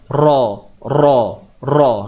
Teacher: Ra tu memang bersifat takrir. Dia ada getaran dia.